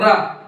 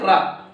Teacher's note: रा को बोलते हैं प्रकंपित या लुंठित वर्ण। प्रकंपित कैसे, मतलब प्रकंपित मतलब जोर लगा के बोलना पड़ता है।